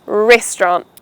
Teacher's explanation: it's actually just two syllables, res and trawnt, making it restaurant